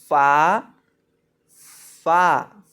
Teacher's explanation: نچلے ہونٹ کا وصل جب سامنے والے اوپر کے دو دانتوں کے کنارے سے لگتا ہے تو فا ادا ہوتا ہے